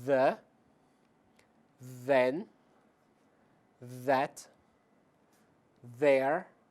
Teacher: existe uma vibração nas cordas vocais ao produzí-lo portanto se você você tocar na sua garganta deverá senti-la vibrar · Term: voiced